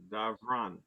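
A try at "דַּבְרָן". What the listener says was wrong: Did you say Davron or Dabron? It's Dabron with a B sound.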